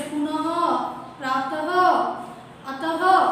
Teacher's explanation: विसर्ग। इसमें पीछे ह होता है बोलने में। जैसे इसे विसर्ग कहते हैं, इसका उच्चारण अह होता है, जैसे पुनः, प्रातः, अतः आदि।